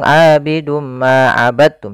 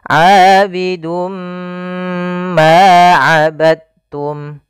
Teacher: kita masukkan tanwinnya kepada huruf mim, kemudian ditahan. Abidum ma, tahan ma, baru dilepas. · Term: idgham bi gunnah